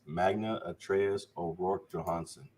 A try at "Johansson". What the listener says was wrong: I think the J is silent. The J is a Y sound. Johansson. Well, it's Norwegian, I believe.